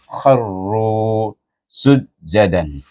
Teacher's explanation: Kha iaitu hujung halqum makhrajnya bergabung dengan huruf ra baris di atas, baca dengan tafkhim. Kharru, ru baris depan ra itu bertemu dengan waw, baca dengan mad asli